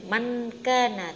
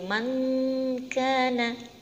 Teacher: jadi bacanya harus mendengung